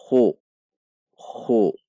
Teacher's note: Perhatikan sifat dan makhraj huruf kha. Dibaca dengan tidak terlalu mengorok. Dibacanya halus saja.